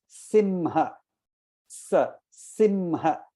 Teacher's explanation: The Sa, Simha, the tongue touches the teeth. So it is called Dantaswa.